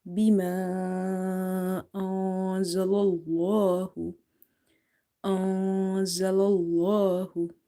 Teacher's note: In the word Allah, before this letter lam, if you see there is fatha, so you have to make it heavy.